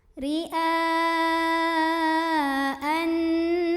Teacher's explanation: dihukumnya ghunnah musyaddadah karenanya bertasydid maka cara membacanya didengungkan bunyi aneh ditahan sampai bergetar halus ke hidung